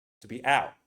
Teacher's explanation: I would say it with the glottal T. To be out, and you stop it with the throat. To be out. This is out.